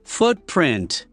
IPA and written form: ˈfʊtprɪnt (footprint)